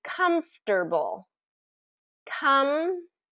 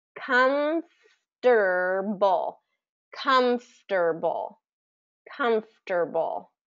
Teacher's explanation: that middle sound is a little awkward because we have the F and the T that come right after each other